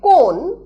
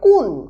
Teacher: কামরূপী উপভাষায় ও কারের হ্রস্ব উ রূপে উচ্চারণ প্রবণতা লক্ষ্য করা যায়। অর্থাৎ যেটা তোমার সেটাকে উচ্চারণ করা হয় তুমার।